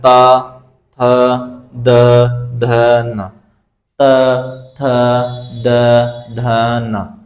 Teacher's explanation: जब हमारी जीभ ऊपर वाले दांतों में लगती है दोस्तों तो उसको बोलते हैं दंत। यानी त वर्ग के सभी वर्ण दंत से बोले जाते हैं, यानी ऊपर वाले दांतों में लगती है उनको बोलते समय हमारी जीभ।